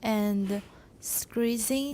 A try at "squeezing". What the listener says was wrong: There's no R in there. Squeeze.